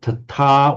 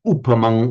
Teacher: the separate words are tata with a long a and the upamang with a short u. So this error here, I'm just going to correct that for a short u.